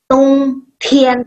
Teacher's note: Tiannya masih sampai keluar udara, ya.